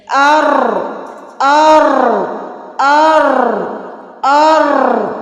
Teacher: زبان کی جو نوک ہے، پشت ہے، وہ اوپر والے دانتوں کے مسوڑوں سے لگ رہی ہے · را کا مخرج ہے زبان کی نوک سامنے والے دانتوں کے مسوڑوں سے لگے۔ جب ہم را بولیں گے تو اس میں سے وائبریٹ ہوگی، اور را کے اوپر جب زبر اور پیش ہوگی تو را موٹی پڑی جائے گی، را را را ایسے۔